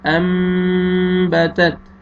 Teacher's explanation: اس کا first part ہم نے پڑھا ہے، اس میں نے آپ کو اس کا قاعدہ بتایا تھا کہ نون ساکن اور تنوین کے بعد جب با آئے گا تو نون کو آپ نے میم میں چینج کر کے غنہ کے ساتھ پڑھنا ہے، ناک پہ آواز لے کے جائیں گے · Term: اقلاب